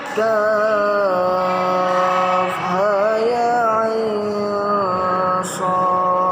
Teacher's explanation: mad lazim harfi mukhaffaf, yakni kaf, ain, dan shad. Panjangnya 3 alif atau 6 harokat